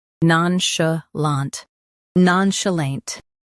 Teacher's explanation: Non, sh, lant, nonchalant. Stress none and keep chalant smooth.